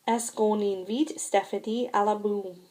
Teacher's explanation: There is liaison after on when the next word begins with a vowel sound.